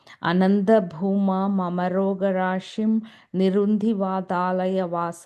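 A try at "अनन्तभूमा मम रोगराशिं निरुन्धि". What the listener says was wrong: So that remember that last line we said Ananta Bhuma Mamaro Garashim Nirundi and then Vathalaya Vasa Vishnu. So that Rogarashim and Nirundi will come together there. So just make sure you're joining those two words.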